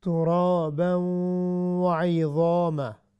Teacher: چونکہ ضا آپ کو بھی پتہ ہے یہ حروف مستعلیہ سے یہ موٹی پڑی جائے گی، ہیوی ہوگی، لیکن ضا کی وجہ سے ہم نے عین کو موٹا نہیں کرنا.